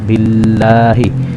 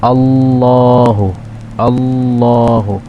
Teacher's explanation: lafadz Allah ini diawali oleh huruf yang berharakat kasrah maka dia dibaca tipis